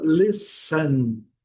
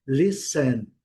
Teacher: o N prolongando o N, listen, não pronunciando o T.